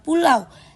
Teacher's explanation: Cara pengucapannya mulai dari posisi bibir datar untuk bunyi A, lalu meluncur menjadi lebih bundar untuk bunyi U tanpa berhenti di tengah. Jadi, bunyinya mengalir menjadi satu. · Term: diftong, diftong au